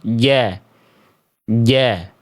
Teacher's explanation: Jahr itu artinya adalah tertahan nafas, Bunda. Jadi nafas huruf jim itu tertahan. Nggak boleh keluar.